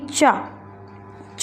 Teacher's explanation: चा को बोलने में कम ध्वनि बाहर आती है, इसलिए यह अल्प प्राण व्यंजन कहलाएगा